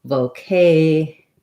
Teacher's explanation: And when I said vocation just there, I kind of stressed it with an O, which we don't really do. In vocation, we do use the O sound, but the K syllable is stressed. So my vo syllable, even though I use a clear O, is going to be pretty short. Vocation. Stress and length on the clear A vowel.